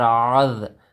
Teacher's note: عین زال زبر عاذ، یہاں پر زال کی آواز نکالنی ہے، زا کی آواز نہیں نکالنی. عین زال زبر عاذ، عین کو صحیح طریقے سے ادا کرنا ہے.